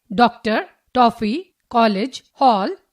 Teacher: यह ध्वनि आ और ओ के बीच में स्थित है। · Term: अध्वनि, औ ध्वनि